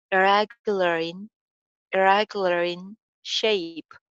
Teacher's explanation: aur ending sound in ke andar link kar jayegi